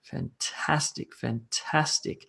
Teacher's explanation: And you might have a three-syllable word like fantastic, fantastic, fantastic. And the emphasis is on the middle syllable.